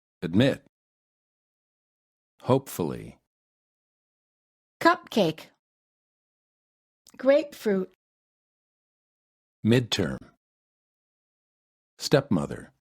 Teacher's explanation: Make sure that you hold the final stop sound in the middle of the word when the next sound is also a consonant.